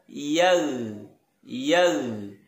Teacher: Yang betul adalah yag. Jangan sampai huruf ghain yang sukun ini memantul, karena huruf ghain sukun ini bukan bagian dari huruf-huruf yang memantul.